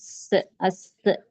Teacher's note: اس کے اپوزٹ جو سین ہے، سین کو ہم سختی سے پڑھیں گے اور اس میں سیٹی کی آواز ہوگی،